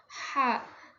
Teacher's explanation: Halqi. Dia masuknya ke halqi yaitu ee bunyi tenggorokan tengah. Ha masih ada di tengah sini.